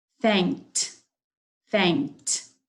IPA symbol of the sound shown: t